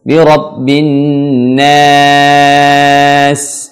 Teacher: perhatikan yang panjang itu adalah pada na-nya, bukan s-nya.